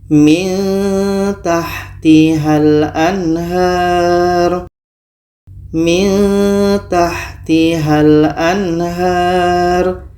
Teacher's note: ini di sini ada nun mati bertemu Ta Maka di sini kita baca secara ikhfa secara samar Oke dan kita dengungkan · Ini ikhfa aqrab karena makhraj ta ini dekat dengan huruf nun.